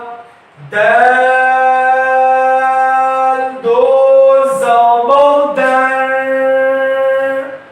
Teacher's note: آواز کو ناک میں لے جائیں گے اور زبان کو تالوں کے ساتھ نہیں لگائیں گے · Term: اخفا